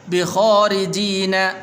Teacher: بخارجين را کے نیچے زیر ہے تو اس لیے اس کو باریک کر کے پڑھیں گے